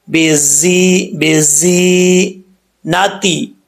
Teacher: یا مدہ ہے، ایک الف کی مقدار، اس کو لمبا کریں گے